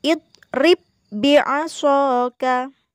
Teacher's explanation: Jadi ba-nya itu langsung dimasukkan pada ba yang kedua. Ya, jadi ba yang pertama yang berharokat sukun tidak perlu dibaca memantul atau qalqalah. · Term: idgham mutamatsilain